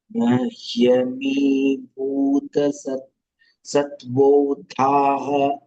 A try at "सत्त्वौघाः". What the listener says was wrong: सत्त्वौघाः. No, ghaha. Yeah, it is dha. You are saying dha. Sattvaughaha. It is not dha, it is dha. Sattvaughaha. Ogha, ogha, flow. Sattvaughaha, not dha. Satvau, not satvo. Satvau. Au ki matra.